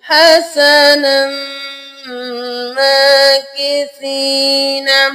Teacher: اگر ہم ملا کے پڑھیں گے تو تب ہم یہاں پہ میم پہ غنہ کریں گے